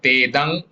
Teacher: Tedang nasal nga for Anuswara